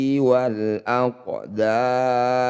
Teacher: qof Sukun disebut bacaan Qalqalah Sugro pantulkan qof jangan berlebihan